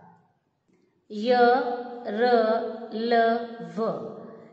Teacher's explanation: अंतस्थ व्यंजन कुल 4 हैं। इनका उच्चारण करते समय जीभ मुख के किसी भी भाग को पूरे तरह से स्पर्श नहीं करती